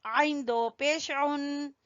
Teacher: आइन को गले के दरमियान से